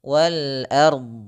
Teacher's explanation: wal ard, a-nya tipis, ra-nya tebal, dot-nya tebal.